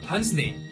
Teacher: The sound D is omitted to avoid two similar consonants close together